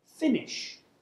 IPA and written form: ˈfɪnɪʆ (finish)